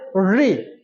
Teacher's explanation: री इसको बोलेंगे तो हमारा जीभ मुड़े ऊपर छु एगा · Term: मुर्धा